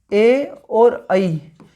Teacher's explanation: ए और ऐ इन दोनों के उच्चारण स्थान है कंठ तालु